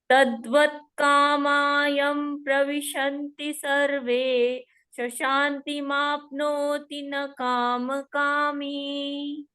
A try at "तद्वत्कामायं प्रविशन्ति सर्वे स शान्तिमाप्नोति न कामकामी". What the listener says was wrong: Excellent. Well done.